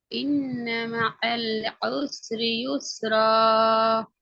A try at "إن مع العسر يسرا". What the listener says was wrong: இப்போ உங்களோட ஐன் சரி. இப்ப ஐன்ல எந்த பிரச்சனையும் இல்லை.